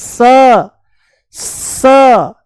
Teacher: श इसका उच्चारण है श मूर्धा ऊपर है ना श और इसका है स ये है स दांतों से बोला जाएगा